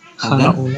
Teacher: Berarti yang haknya lebih pendek, yang lamnya panjang.